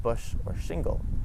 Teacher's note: in french the ch and the sh sounds both make the sound sh